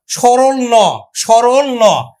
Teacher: দন্তমূলীয় ব্যঞ্জন যখন আমরা উচ্চারণ করি তখন সক্রিয় ভূমিকা পালন করে জিভের ডগা আর নিষ্ক্রিয় ভূমিকা পালন করে দন্তমূল